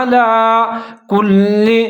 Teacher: علا لام کے اوپر کھڑا زبر ہے, ایک الف کے برابر لمبا پڑھنا ہے